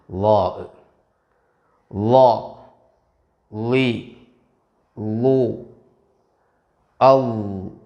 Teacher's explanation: നാവിന്റെ തല പല്ലിന്റെ തെല്ലിൽ അഥവാ തലയിൽ അല്പം പുറത്തു കാണുന്ന വിധം തട്ടുന്നുണ്ടെന്ന് ഉറപ്പുവരുത്തണം എന്നാൽ അമിതമായി നാവിൻറെ തല പുറത്ത് കാണാതിരിക്കാനും ശ്രദ്ധിക്കണം അതുപോലെ ളായിനു സുക്കൂൻ ഉള്ള · മഹ്റജ് നാവിൻറെ തലയും മേലെ മുൻപല്ലുകളുടെ തലയും ഈ മഹ്റജിൽ നിന്ന് പുറപ്പെടുന്ന ഒരു ഹർഫാണ് ളാഹ് ളാഇന്റെ മഹ്റജായി കിതാബിൽ ഉള്ളത്